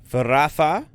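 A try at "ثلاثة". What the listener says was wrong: No, with an L. Thalatha.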